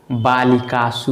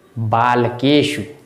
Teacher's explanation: बालिकासु, इसमें दंत स है, बालिकासु में दंत स है, और बालकेषु में मूर्धन्य स है। मूर्धा के यूज से बोला जाएगा और दंत के यूज से बोला जाएगा दंत स।